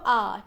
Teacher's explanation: विवत् स्वर में जिसमें सबसे ज़्यादा लगभग पूरा मुंह खुलता है